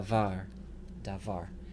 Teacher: the second syllable is closed with a long vowel but that's okay because it's the stressed syllable so da VAR da var that word means word the doggish · the first syllable is unstressed and open with a long vowel that's allowable the second syllable is closed with a long vowel but that's okay because it's the stressed syllable